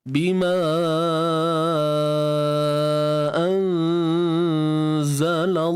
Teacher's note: Sekali lagi kita jumpa nun mati bertemu zai. Kat sini ikhfa hakiki, dengung nipis sahaja.